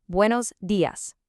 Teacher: Notice how that i in días is super sharp, just like the word fee.